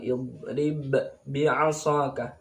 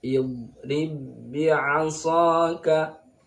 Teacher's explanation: meskipun ba sukun ini termasuk qalqalah, tidak boleh dipantulkan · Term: idgham kamil